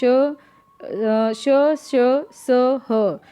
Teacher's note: ये सब क्या होते हैं, संघर्षी व्यंजन होते हैं